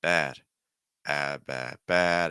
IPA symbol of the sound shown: æ